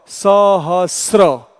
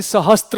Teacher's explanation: अब आप देखिए सहस्त्र को हम इस तरह से यदि वर्णच्छेद करते हैं तो स अ ह अ स र और अ, इसका सही उच्चारण क्या होगा, सहस्र ऐसा होगा, न कि सहस्त्र होगा, क्योंकि त है ही नहीं उसमें